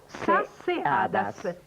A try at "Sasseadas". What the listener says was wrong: No, beh, hai tolto una S.